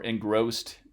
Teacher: the N can change into an engma before the velar g, because engma is a velar nasal stop and g is a velar voiced stop. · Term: place assimilation